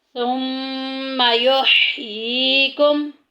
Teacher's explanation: ये में देखें या साकिन पीछे जेर आ गई है, मद्दा का कायदा जारी हो रहा है, एक अलिफ के बराबर लंबा करेंगे। सुम्मा युहयीकुम, मीम साकिन के बाद सा आ गया, सा जो के इजहार शफ़ी के ख़ानदान में से है, ज़ाहिर करके पढ़ेंगे, गुन्ना नहीं करेंगे।